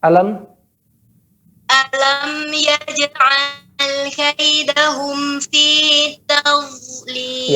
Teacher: Tepi lidah. Jangan ujung lidah. Kalau ujung lidah, tadz, ada getaran dia. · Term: dad